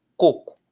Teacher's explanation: coco, a força está na primeira sílaba, na penúltima, tá? Ou seja, é uma paroxítona.